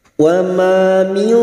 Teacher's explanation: Wa ma min, nun sukun bertemu dal, ikfa hakiki. Kita samarkan bunyi nun sukun dan mendengung selama 3 harokat